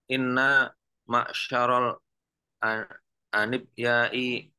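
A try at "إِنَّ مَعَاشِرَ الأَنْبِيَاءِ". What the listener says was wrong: Ambiyai bukan anib. Anbiyai. Nah, dalam hadis inna ma'syaral anbiya'i.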